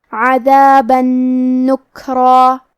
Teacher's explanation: کیونکہ نون حروف الادغام بغنہ میں سے ہے اور ادغام کا معنی ہے حرف کو حرف میں داخل کرنا، تو ہم یہ تنوین کو نون میں ملا کے غنہ اور تشدید کے ساتھ یہ حکم کو ادا کریں گے